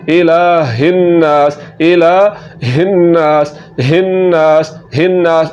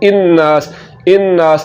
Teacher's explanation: हमने हमदा की आवाज़ नहीं निकालनी, बल्कि यहाँ पर हा की आवाज़ निकालनी